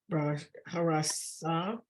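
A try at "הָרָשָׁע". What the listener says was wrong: Look where the dot is. It's a shin. It's a shin. Ra.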